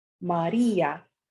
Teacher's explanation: And there is no diphthong created, such as in the word Maria. The I, which is a weak vowel, does not form a diphthong with the A because it is pronounced more strongly. Maria. Therefore, it separates from the A, creating another syllable.